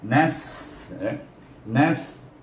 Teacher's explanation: Kemudian kita jumpa kalimah nasta'in, nun baris di atas dimatikan dengan huruf sin yang mati. Dia bertemu dengan huruf sin yang mati, bunyi dengan hamas.